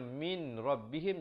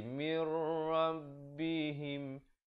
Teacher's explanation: nun mati bertemu ra, hukumnya idgham bila gunnah. Masuk tanpa dengung